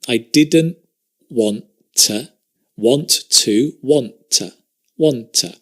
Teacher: So here we connect the didn't and the want, but we drop the T.